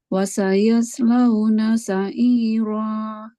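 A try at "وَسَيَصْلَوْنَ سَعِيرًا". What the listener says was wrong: Shotnya tebelin. Tebelin. Wasayals, sofirnya udah dapat, tapi kurang tebal.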